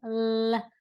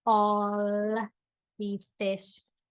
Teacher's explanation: like this notice the way that I am emphasizing the L I'm holding it out at least a few seconds L and I'm adding that little pop that is really showing